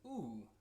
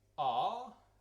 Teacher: the oo sits quite far back, where the ah sits quite more towards the front of the mouth